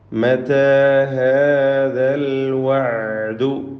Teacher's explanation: എല്ലാ അക്ഷരങ്ങൾക്കും ഇസ്തിഫാലിൻ്റെ തർക്കീഖ് നൽകിക്കൊണ്ട് ഉച്ചരിക്കണം